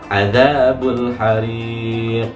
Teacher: Ada bunyi qaf yang dipantulkan di ujung. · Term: qalqalah